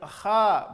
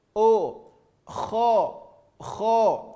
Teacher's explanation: Kha, tidak, tapi kho. Bunyi vokal huruf tebal adalah huruf o.